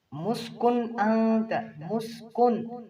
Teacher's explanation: یہاں پر جو کاف پیش نون کن نون ساکن ہے، اس کے آگے حمزہ ہے تو یہاں پر اظہار کریں گے